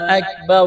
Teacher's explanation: اس کو کھینچنا ہے، حمزہ کو کاف کے ساتھ ملائیں گے، کاف کو باریک کرنا ہے، را کے اوپر پیش ہے، را کو موٹا کرنا ہے